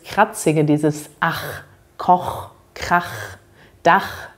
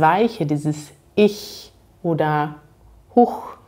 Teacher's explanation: Ihr habt vielleicht schon mal gehört, dass man das CH anders ausspricht, je nachdem welcher Vokal davor ist. Bei A und O hört man dieses Kratzige, dieses Ach, Koch, Krach, Dach. Und bei I und U zum Beispiel hat man dieses Weiche, dieses Ich oder Huch.